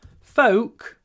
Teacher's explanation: Don't pronounce the L it's not pronounced